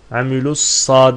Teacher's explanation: Görüldüğü üzere Elif Lam okunmadı idgamı şemsiye diyoruz buna